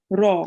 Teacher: remember, the ra is also a bit rounded. When you read it, try to round your mouth.